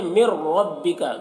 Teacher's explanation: اسی طریقے سے یہاں پر دیکھیے مر ربک، نون ساکن کے بعد کیا ہے؟ را ہے، تو نون ساکن کو ہم را سے ملا کر پڑھیں گے، اس نون کو نہیں پڑھیں گے اور بغیر غنہ کے پڑھیں گے